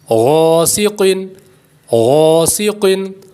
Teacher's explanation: دو حروف مستعلیہ ہیں دونوں کو پر یعنی موٹا کریں گے